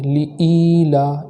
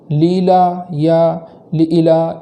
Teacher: لإیلا اس طریقے سے پڑھیں گے، لیلا یا لإلا اس طریقے سے نہیں پڑھیں گے۔ حمزہ کو اس طرح کھینچیں گے کہ وہاں ایک الف کے برابر تاخیر ہو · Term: یا مدہ